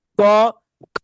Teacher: একটা অল্প ধ্বনিময় বর্ণ পরেরটা মহাপ্রাণ ধ্বনিময় বর্ণ